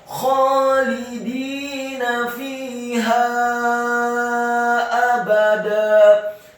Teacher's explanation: Kemudian lamnya dibaca tipis kasrah satu harokat, dalnya dibaca tipis kasrah dua harokat karena setelahnya ada ya sukun, dan nunnya dibaca tipis fathah satu harokat · fa-nya dibaca kasrah dua harokat karena setelahnya ada ya sukun.